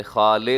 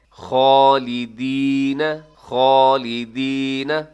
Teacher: خا موٹا پڑا جائے گا اور اس کے اوپر کھڑی زبر ہے، تھوڑا لمبا بھی کیجیے گا